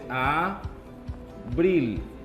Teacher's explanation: Lleva su mayor fuerza de voz en la sílaba bril